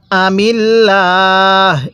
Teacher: আল্লাহ শব্দের এই লামটিকে চিকন করে পড়তে হবে, কারণ আল্লাহ শব্দের লামের পূর্বে এরকম জের থাকলে লামটাকে চিকন করে পড়তে হয়।